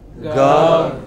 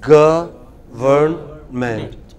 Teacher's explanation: break it into syllables. Government. And put the stress on the first